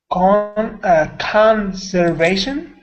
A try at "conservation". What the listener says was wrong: Yep, conservation. So that was good. The only thing is, sometimes with your R's, I'm missing that round, full R sound. So conservation.